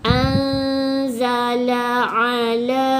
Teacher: Nun mati jumpa dengan zai, hukum dia adalah ikhfa hakiki. Jadi kita wajib dengung 2 harakat.